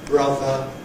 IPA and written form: ˈbrʌðə (brother)